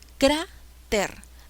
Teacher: Es una palabra grave, porque lleva la mayor fuerza de voz en la penúltima sílaba.